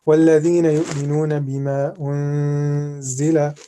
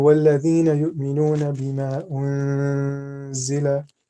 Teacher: And what we're doing is that we're concealing the sound of nun into the letter after. And we do this in a way where like we're prolonging the sound and we're kind of nasalizing it as well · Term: ikhfa